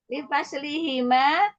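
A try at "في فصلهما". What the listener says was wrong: fi bukan li yang fi. Iya, anak kok mendengarnya huruf lam ya yang dibaca yang li, bukan li, fi. Iya Kak, yang tadi ngucapin lam apa fi?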